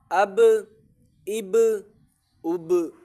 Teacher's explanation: آواز اسی لیے لوٹ کر واپسی معلوم ہو رہی ہے کیونکہ قلقلہ ہے با کے اوپر